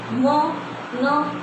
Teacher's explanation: नाक में क्या होती है, हमारी झंझनाहट होती है और नाक से, नासिका से ही उच्चारित होती है, नासिका। ठीक है, न का उच्चारण स्थान किससे होता है, हमारी नाक से होता है